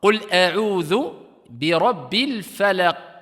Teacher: Et ici, il y a une pause, il est en fin de ayah, donc c'est une qalqala, si on s'arrête ici, kubra, grande.